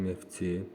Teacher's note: F-T birləşmələrində T düşür. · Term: səs düşümü